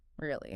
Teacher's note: I just snap back with a sharp, falling tone